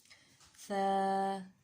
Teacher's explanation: سا کا مخرج ہے زبان کی نوک اور ثنایا اولیہ کا سرا۔